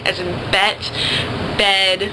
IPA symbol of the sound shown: ɛ